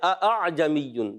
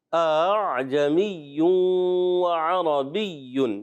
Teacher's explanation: اس میں تسہیل کرنی ہے، دوسرے حمزہ کو نرم کرنا ہے، اعجمی وعربی، یہ پڑھنا ہوتا ہے، ٹھیک ہے۔